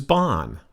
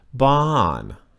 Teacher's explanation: the word for house in Thai is Bon falling tone